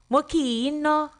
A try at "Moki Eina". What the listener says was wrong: Bring your voice down.